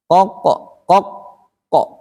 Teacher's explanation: Nah, yang terakhir ditahan baru mantul.